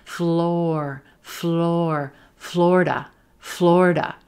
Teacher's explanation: moving from that rowboat O into the er.